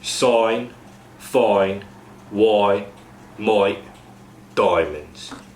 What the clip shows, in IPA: aɪ to ɔɪ